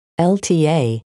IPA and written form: ʃɔ̂ːlta (Šolta)